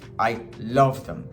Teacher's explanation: you could stress the love